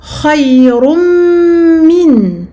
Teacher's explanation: Idgham birunna, la fusion se fait avec nasillement ou nasalisation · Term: al-idgham birunna